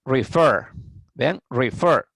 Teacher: Porque el verbo es de dos sílabas, refer, pero la sílaba que lleva el acento, que lleva la pronunciación más fuerte es la última sílaba, fer.